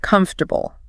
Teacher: Yes, that is a textbook example of schwa deletion. The unstressed vowel simply ceases to exist in spoken reality. It's just gone.